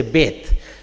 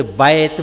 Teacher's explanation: O is monophthong and Au is diphthong, and A is monophthong and I is diphthong.